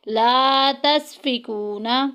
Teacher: واو ساکن پیچھے پیش، واو مدہ کا قاعدہ جاری ہو رہا ہے، ایک الف کے برابر لمبا کریں گے